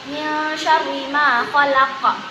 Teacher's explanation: Qalqalah kubra qalqalah besar, qalqalah yang ada di akhir ayat.